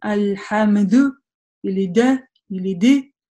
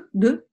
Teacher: важно, чтобы при произношении этой буквы на сукуне у нас не было какого-то дополнительного гласного звука. Например, «аль-хамду» или «да», или «ды», да, то есть «д», «д», без какого-то гласного звука или призвука.